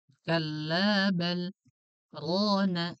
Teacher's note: Kalau di riwayat Hafs dia ada saktah, berhenti sejenak.